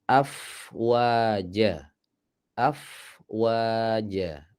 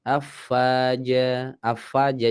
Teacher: Jadi yang benar itu bibirnya dimajukan setelah huruf fa. Af, ini huruf fa selesai, kemudian wa.